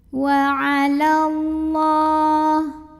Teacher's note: lam jalalah dibaca secara tafkhim karena huruf sebelumnya berbaris fathah, maka bacanya tebal, pangkal lidah diangkat.